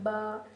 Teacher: با اور میم کا مخرج سیم ہی ہے، دونوں کو ہونٹ کو لگ کر ادا ہوتے ہیں